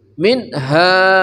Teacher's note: ha ya dari pangkal kerongkongan